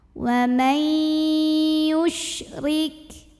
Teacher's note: Huruf ra dibunyikan secara tarqiq sebab barisnya ini di bawah kasrah. Jadi cara bacanya ditipiskan.